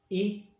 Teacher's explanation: it's like the long E in English, but we don't make it long